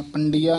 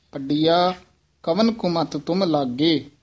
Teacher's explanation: ये पड़िया इस तरह उच्चारण करना है, पंडिया नहीं कहना टिप्पी ला के